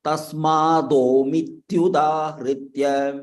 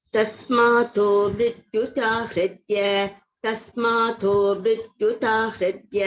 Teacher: Wherever there is da, you are chanting ta.